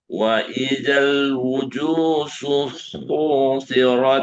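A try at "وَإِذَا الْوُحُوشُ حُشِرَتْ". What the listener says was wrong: Nah, bukan wujud. Wuhu ya. Wuhushu.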